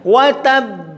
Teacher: ketika mau disukun di akhir kata ba, maka harus dipantulkan betul dan nampak hamzanya yang sukun.